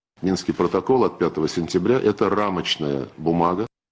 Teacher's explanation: there is a strong glottal onset on eta